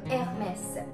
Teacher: in French we do not pronounce the H. H is always silent and R will have a R sound.